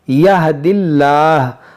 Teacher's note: اب یہاں پر دیکھیں اس میں جلالت اللہ عز و جل کے لام سے پہلے زیر ہے تو اس کو ہم باریک پڑھیں گے